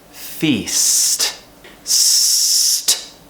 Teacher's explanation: We cut the sound out with that very quick t sound. Feast. And if you're having difficulty, the letter S is really useful because you can extend it and make it longer and then cut it out with that T.